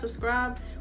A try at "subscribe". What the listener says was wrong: I think you're missing the B in the second one.